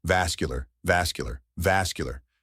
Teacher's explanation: The correct pronunciation is vascular, a three-syllable word with emphasis on the first syllable